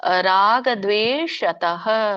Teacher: ರಾಗ ದ್ವೇ ದೀರ್ಘ ಇದೆ, ದ್ವೇ ದಕ್ಕೆ ಒವತ್ತು ದೀರ್ಘ, ದ್ವೇ ಶತಃ ಮೂರ್ಧನಿ ಶ ಬರುತ್ತೆ. ರಾಗ ದ್ವೇಷತಃ.